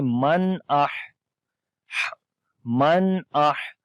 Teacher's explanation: ہا کے اوپر صفت حمز کریں گے, ہا کے اندر سانس جاری ہوگا · نون ساکن ہے, اس کے بعد حمزہ آ گیا ہے تو یہاں پر اظہار کریں گے, یعنی کہ نون کی آواز کو ظاہر کر کر پڑھتے ہیں